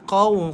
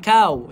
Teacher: Qaw, qaf tebal. Bukan kau eh, bukan kau. Tapi qaw, sebab qaf tebal.